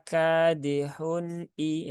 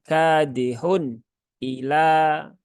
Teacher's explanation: Maka kadihun i ya, bukan kadihun ila. Nah, tidak boleh ditekan karena nun itu sifatnya tawasud ya, bukan syiddah. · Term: izhar